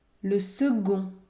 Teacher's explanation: Notez bien ici la consonne C se prononce g.